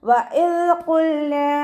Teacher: നമ്മുടെ നാവിൻ്റെ അറ്റവും മേലെ മുൻപല്ലിൻ്റെ അറ്റവും ചേർന്നിട്ടാണ് ദാല് പുറപ്പെടുന്നത്